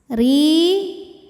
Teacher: Ro dibunyikan secara tarqiq karena harokatnya di bawah, maka bacanya tipis. Ri. Ini hukumnya mad tabi'i zahiri karena ada ya sukun sebelumnya kasrah, maka ri panjang 2 harokat.